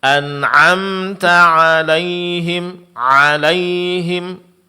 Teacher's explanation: Pengucapan huruf ain satu harakat ya, Bu ya. Jangan agak terpanjangkan ya.